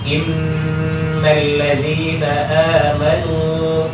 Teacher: Nun bertasydid kadarnya adalah 2 harakat · Apa yang disebut gunnah itu adalah dengungan yang terdapat pada kata inna, karena di situ ada nun tasydid. Nun tasydid itu bagian daripada bacaan gunnah.